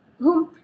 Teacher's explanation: izhar maksudnya tidak dengung jelas pendek bacaan jelas pendek tidak berdengung Kenapa syafawi syafawi bermaksud bibir huruf mim adalah keluar dari bibir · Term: izhar syafawi